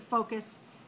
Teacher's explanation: So we have 2 syllables, stress on the first.